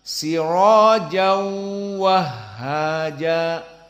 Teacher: Di qiraah jumhur, jim dalam keadaan tanwin, jan bertemu dengan waw, idgham, sepakat dengan jumhur idgham. Namun jumhur dibaca dengan 2 harokat bi gunnah, tanwin masuk kepada waw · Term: idgham bi gunnah